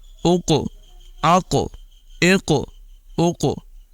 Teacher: ایک تو اس میں آواز پر کریں گے اور دوسرا قلقلہ بھی نمایاں کریں گے